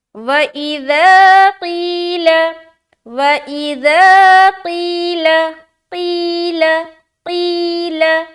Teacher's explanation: یا مدہ، یا ساکن، اس سے پہلے ہے زیر، تو ایک الف کھینچیں گے، لام کو بالکل جلد چھوڑنا ہے کیونکہ اس کے اوپر کیا ہے، زبر ہے۔